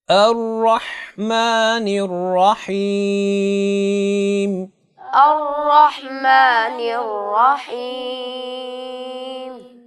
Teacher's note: ہا کی ادائیگی میں آپ نے آواز کو وسط حلق سے نکالنا ہے